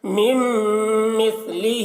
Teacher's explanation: میم میم کے ساتھ مل رہا ہے، نون کو بالکل بھی نہیں پڑھا جا رہا